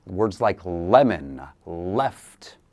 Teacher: So for the letter L, again, the tip of the tongue where the tooth meets the mouth, the tooth ridge.